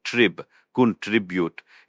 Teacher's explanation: The stress is on the second syllable.